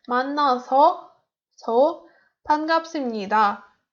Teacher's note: You have to put your stress into their last syllable.